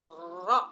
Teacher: kalau ro bukan ujung lidah, tapi lebih di hampir ke tengah lidah ya. Ro gitu. Di ujung tapi bagian atas.